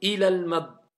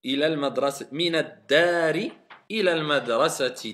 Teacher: quand on fait la liaison, on prolonge plus la voyelle longue. On passe directement.